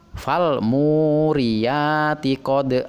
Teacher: Qodha dibaca panjang 2 harokat karena ini adalah termasuk mad iwad